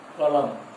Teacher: कलम में ल पर अधिक जोर है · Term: बलाघात